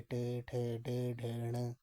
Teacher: मूर्धन्य यानी कि तालु के मूर्धा भाग से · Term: मूर्धन्य व्यंजन